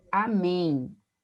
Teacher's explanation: o M ali, né, nasalizando, mas também como se eu tivesse um som de um I semivocálico, né? Lá no finalzinho da palavra